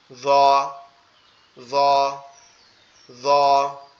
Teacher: জিহ্বার আগা সামনের দুই দাঁতের আগার সঙ্গে লাগবে, লেগে উচ্চারিত হবে